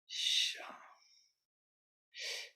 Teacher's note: There is something in this sh sound. First of all, it is fricative. It continues endlessly,